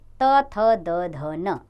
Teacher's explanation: दांत का जीभ के अग्र सिरे से स्पर्श, यानी कि दांत का जीभ के अगले हिस्से से स्पर्श होना, इसलिए ये दंत्य व्यंजन होता है